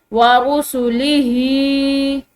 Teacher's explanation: ये गोल हा जो होती है मोटी यानी कि सीने से अदा होने वाली ह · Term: मोटी हा